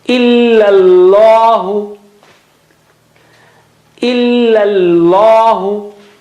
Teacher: So illa, first one is flat and thin, and the other one is thick.